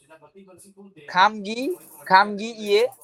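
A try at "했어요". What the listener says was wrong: না, এ, শুধু এ। খাম গিয়ে। ইয়ে না, এ।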